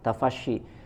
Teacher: huruf shin di sini jelaskan angin yang menyebar di dalam mulut